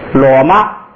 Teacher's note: 那个马声调变成了高平调